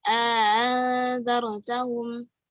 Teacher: memasukkan alif di antara 2 hamzah dengan 2 harokat dan tashil hamzah yang kedua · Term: tashil hamzati saniyah